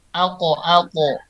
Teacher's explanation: Kalau kof sama po itu dia mantulnya ke o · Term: huruf qalqalah